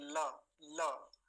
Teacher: वही से बोले जाते हैं अच्छा ल बोल के देखिए ल ल हल्का दांत में और तालू में जाकर लगती है हमारी जीवा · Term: लकार